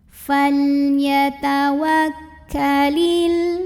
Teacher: lam sukun ini disebut dengan lam mutlak ya, dibacanya jelas